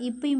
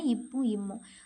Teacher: மேல் இதலும் கீழிதலும் பொருந்துவதால் பிறக்கின்றன